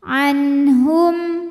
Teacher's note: yang artinya makhrajnya memanjang waindan an ada hukum izhar halqi sebab nun sukun ketemu huruf halqi atau huruf tenggorokan yaitu ha maka Nun dibaca jelas